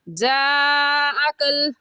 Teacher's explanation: और इस मद को हम 4 अलिफ की मिकदार खींचेंगे, اس سے کم یا زیادہ نہیں کھینچیں گے. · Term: मद्दे मुत्तसिल